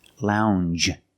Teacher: It's a regular n, plus the soft j sound.